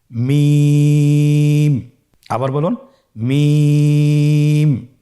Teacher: 2 ঠোঁট চেপে ধরে আমরা উচ্চারণ করব মিম।